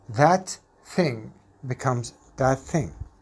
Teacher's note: If CF is alveolar and CI is dental, the alveolar CF changes to be dental, like the dental CI. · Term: Alveolar plus dental